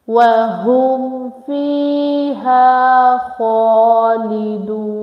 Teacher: Yeah, second, make 1 second long, and kha is the bulky letter with standing fatta, so make it long for 1 second